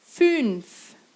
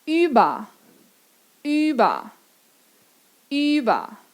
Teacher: Boca de U falando I.